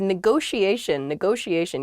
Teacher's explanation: neither T is a hard T. They're both very soft, that sh sound, because they're followed by the I and another vowel, the she, a negotiation.